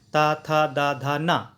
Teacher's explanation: टा, ठा, डा, ढा, अड़ा मूर्धन्य कहे गए हैं इन अक्षरों को। वहीं ता, था, दा, धा, ना को दंतीय कहा गया है, क्योंकि जीभ जो है दांतों से लगती है